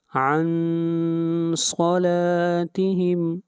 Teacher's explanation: نون ساکن کے بعد حروف حلقی میں سے کوئی حرف نہیں ہے، اس لیے نون کے اوپر اخفا ہوگا